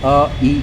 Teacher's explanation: अ और इ को मिलाया तो एक साउंड निकली। अ इ आप बार-बार रिपीट करते रहेंगे तो एक साउंड निकलेगा जिससे ए बन के आएगा। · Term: संयुक्त स्वर